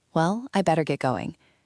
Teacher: Well, with a falling intonation signals that you are ready to leave.